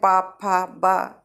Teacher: पा वर्ग में ओष्ठ व्यंजन होते हैं, तो ओठ चिपकते हैं, पा फा बा, है ना।